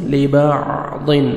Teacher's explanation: ضاد کو موٹا کر کے پڑھنا ہے